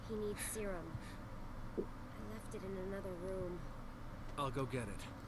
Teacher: When I'm listening to this, I notice my voice quality is more nasal